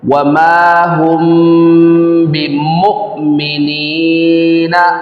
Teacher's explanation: ایک الف کے برابر غنہ کیا جاتا ہے۔ وما ہم بمؤمنین، یہاں پر حمزہ ساکن ہے، یہاں پر جھٹکا دے کر پڑھیں گے۔ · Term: اخفاء شفوی